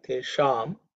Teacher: The Sha is cerebral Sha. So the tongue should point upwards.